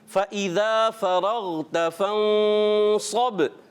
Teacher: نون میں آپ کی جو زبان ہے وہ دانتوں سے نہیں لگنی چاہیے. فم ایسے نہیں، آپ نے تالو میں پیچھے زبان لگائے، دانتوں سے پیچھے اوپر تالو کی طرح.